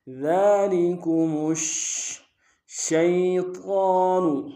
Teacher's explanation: کریں گے، شین کے اوپر تشدید زور دیں گے، ذالکم شیطان، شین کو یا کے ساتھ ملانا ہے، یا لین ہے بغیر کھینچے پڑیں گے